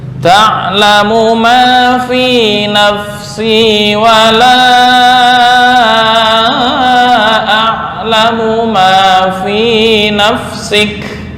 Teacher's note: Ma di sini hanya 2 harokat atau 1 alif, jangan lebih.